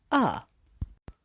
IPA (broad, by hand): ə